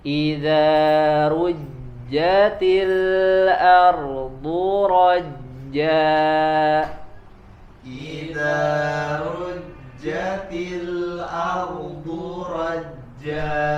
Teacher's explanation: Di sini ada 3 huruf ro, ya, rujjatil, kemudian ardu, dan yang ketiga rajja, ya. Seluruhnya huruf ro di sini dibaca tebal